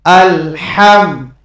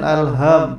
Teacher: আলহাম, এখানে এই হার উচ্চারণ করার সময় প্রথমে গলার ভিতর থেকে একটু হা এরকম একটু বাতাস বেরোবে, তারপরে এই হার উচ্চারণ করতে হবে